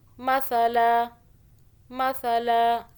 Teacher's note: بہذا مثلا، مثلا سا کو سافٹ پڑھنا ہے، زبان کو باہر کریں پھر ادا ہو جائے گا